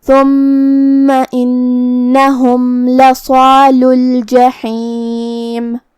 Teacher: कल्ला इन्नहुम अन रब्बिहिम यौमइज़िन लमहजूबून थुम्मा इन्नहुम लसालुल जहीम कलिमत थुम्मा में यहाँ हर्फ था है, था को हम ज़बान के सर और ऊपर वाले दांतों के अंदरूनी किनारों से अदा करेंगे। मीम पे तशदीद है तो 2 हरफ के बराबर मीम को पढ़ना है